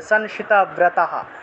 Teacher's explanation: অনুসার শব্দের মাঝখানে আছে সেজন্য ন এর মত উচ্চারণটা হবে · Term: বিসর্গ